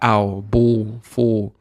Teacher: When we put L on the end in British accent, we don't even pronounce it. Sounds like a wow.